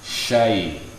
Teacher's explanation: Jadi fathah ketemu ya sukun, lin. Syai, lembut saja. Syai, tidak ada tekanan.